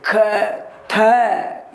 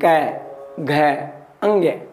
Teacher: इनको बोलने में क्या है हमारा प्राण निकल जाते हैं। ख थ इस तरीके से बोलते हैं ना, जोर लगता है हमारा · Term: महाप्राण